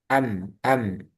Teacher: Kalau mim dia di bibir. Am, am. Di bibir sama di hidung.